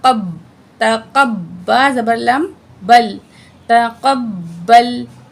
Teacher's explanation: قاف کو موٹا پڑھیں گے، با کے ساتھ جوائنٹ کریں گے